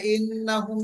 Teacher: এখানে ইন্না ওয়াজিব গুন্না হবে, হুম কোনো মদ নাই